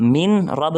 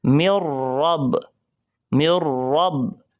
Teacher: یہاں پر نون کی آواز بالکل ختم کر دیں گے · نون ساکن کے بعد را ہے تو یہاں نون بالکل ختم کر دیں گے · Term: ادغام بغیر غننے والا